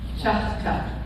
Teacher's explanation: All the T's in Choctaw are going to sound like T. We don't have the sound of D in Choctaw. So anytime you hear somebody say Chada, that hurts my ears. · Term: T sound